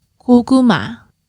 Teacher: with that kyok that can be a k or a g it's the first sound that's always the k sound in the middle of the word it will be a g sound